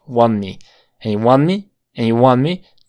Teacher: aquí no vamos a pronunciar la t porque está entre dos sonidos de consonantes